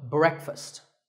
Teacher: Break with a short eh sound and fust with an uh sound, so breakfast.